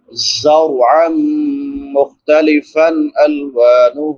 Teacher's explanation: فا پہ نون تنوین ہے، بعد میں حروف حلقی میں سے حمزہ ہے تو یہاں پہ اظہار ہوگا۔